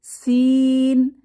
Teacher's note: জিহবার আগা সামনের নিচের দাঁতের গোড়ায় চেপে ইংরেজি সি এর মতো সিন উচ্চারিত হবে।